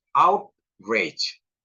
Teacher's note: jadi out-nya yang lebih kencang di situ ya stresnya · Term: word stress, stressnya